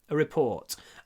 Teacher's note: Здесь глагол to report и существительное a report. Так что ударение и для существительного, и для глагола на втором слоге.